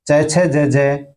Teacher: स्पर्श संघर्षी जिन व्यंजनों के उच्चारण में स्पर्श का समय अपेक्षाकृत अधिक होता है, उच्चारण के बाद वाला भाग संघर्षी हो जाता है, स्पर्श संघर्षी कहलाते हैं।